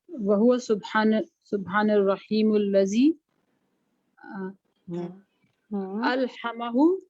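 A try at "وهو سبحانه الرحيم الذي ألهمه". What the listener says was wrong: शाबाश, बिल्कुल दुरुस्त पढ़ा है आप।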